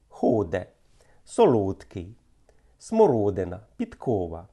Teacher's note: «о» під наголосом через надмірне змикання губ наближається до «у»